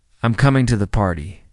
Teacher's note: when you make a simple statement, your voice typically falls slightly at the end. I'm coming to the party. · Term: falling tone